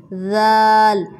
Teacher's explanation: ذال نرم لیٹر میں سے ہے اور اس کا مخرج ثا والا ہے۔ اسی طرح زبان کی نوک کو ثنایا علیہ کے کناروں کے نیچے رکھیں گے اور نرمی سے ادا کریں گے